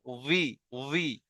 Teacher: ভি, মানে বি হবে না, একেবারে বি বলবেন না কেউ। মানে ঠোঁটটা অসম্পূর্ণ থাকবে, আওয়াজটা একটু নিচের দিকে দেবেন, ঠিক আছে? জেরের আওয়াজ নিচের দিকে যাবে, ঠিক আছে?